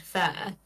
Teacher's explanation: I say it as a monophthong, a single vowel sound, fair. But I would say it is a diphthong, I think.